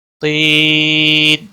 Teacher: یا مدہ ہے، ایک الف کے برابر کھینچ کر پڑھیں گے، اور وقف کی صورت میں جب نون ساکن ہوگا تو 3 سے 5 سیکنڈ یا 5 الف کے برابر کھینچ کر آپ وقف کریں گے۔